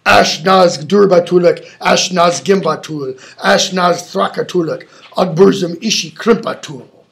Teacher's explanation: It has a lot of hard, what are called velar sounds, sounds made in the back of the throat, and a lot of fricatives, rubbing sounds.